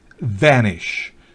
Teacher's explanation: la V, labio dental, es diferente a la V bilabial